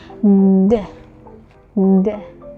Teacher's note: So you produce it by putting the tongue into the alveolar ridge while the vocal cords vibrate. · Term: voice alveolar plosive